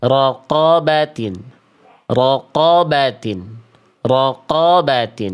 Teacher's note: Cukup buka mulut Anda untuk mengucapkan fathah dan angkat bagian belakang lidah untuk menebalkan hurufnya. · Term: karakter tebal